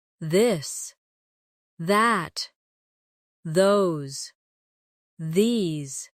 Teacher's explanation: let your tongue touch your teeth lightly but use your voice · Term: softer version of th